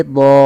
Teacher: do-nya kita ganti panjang menjadi do, bukan lagi don tapi do ketika kita waqaf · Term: mad iwad